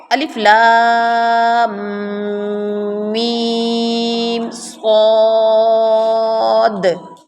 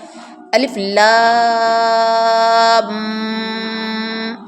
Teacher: جب شد میم پر آنا ہے تو آپ نے لپس کو دبانا ہے تھوڑا سا، ساتھ ناک میں غنہ بھی کرنا ہے